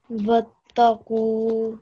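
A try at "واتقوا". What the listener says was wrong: So wattaqu. Put a bit more stress.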